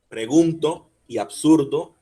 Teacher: Otro ejemplo es la palabra pregunto y la palabra absurdo. Pregunto y absurdo, fuerza en la U. Pregunto seguido de NTO y absurdo seguido de RDO.